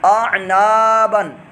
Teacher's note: نون الف زبر نا الف مدہ بن گیا، ایک الف دو حرکات کے برابر لمبا کریں گے